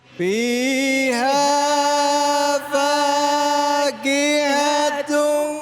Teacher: Fiha di sini dibaca panjang 1A. Fakihatu dibaca idgham bighun.